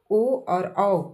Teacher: ओ और औ आपका कंठ प्लस ओठ जोड़ दीजिए, पहले नंबर में कंठ जोड़ दीजिए, फिर ओठ को जोड़ दीजिए।